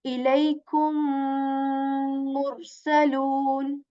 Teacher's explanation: as the letter meme is articulated with the two lips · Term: idgham shafawi